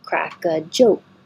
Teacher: you'll hear this K because it's connecting to the a kraka but you won't hear the last K because you're just holding your tongue in the K position